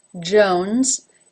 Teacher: it then has the oh as in no diphthong and notice that the S at the end is voiced Jones